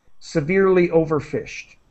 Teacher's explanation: Just a T sound at the end of fished.